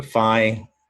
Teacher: And fi and finally is an open syllable. It's got that long I sound.